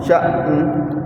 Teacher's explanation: तो शीन हमजा ज़बर शा, शीन हमजा ज़बर शा, शीन हमजा ज़बर शा, शीन हमजा ज़बर शा, नून दो पेश नून, नून दो पेश नून, शअनुन, शअनुन, वक़ वक़, शअन। शअन, पहले हमजे का झटका देंगे, फिर नून की आवाज़, नून का साउंड, शअन। शअन, न ज़्यादा नहीं कहेंगे, वो कलकला बन जाएगा।